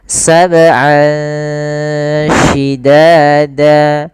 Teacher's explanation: Ah ini ada bacaan ikhfa yaitu kita samarkan suara an ya ke huruf syin. Jadi terdengar seolah-olah dia ada eng gitu ya.